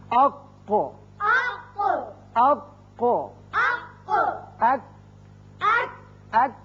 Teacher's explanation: زبان کا آخری حصہ قوے کی جو قریب ہے، جب اوپر تالو سے لگتا ہے تو ادا ہوتے ہیں۔ قوف پر کر کے پڑھتے ہیں، کاف ذرا ہٹ کر نیچے کی طرف سے نکلتا ہے اور باریک ہوتا ہے۔ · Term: قوے کے حروف